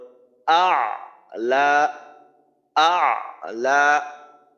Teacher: হামজার মাখরাজ থেকে আপনি সরাসরি আইনের মাখরাজে চলে যাবেন